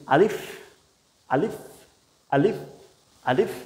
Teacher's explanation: আলিফটা হলো মুখের খালি জায়গা থেকে। আপনি স্বাভাবিকভাবে যদি বলে দেন আলিফ আলিফ আলিফ আলিফ জাস্ট একটু বাতাস বের হবে।